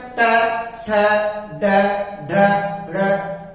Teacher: कहां से उच्चारण होगा, जीभ मुड़ गई, मुड़े जैसे वैसे मूर्धा। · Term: मूर्धन्य